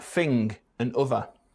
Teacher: we ReDiscover some features we last heard in London for example th fronting in words like fing and other · th fronting in words like thing and other.